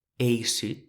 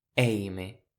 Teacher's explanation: Remarquez la différence de prononciation entre le EI, qui est très fermé, comme dans eissut (sec) et le ÈI, qui est très ouvert.